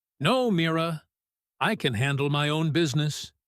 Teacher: The word no snaps out short and hard, almost cutting the air. My own business gets heavy, clipped stress on both own and business. Each word landing like a small firm step.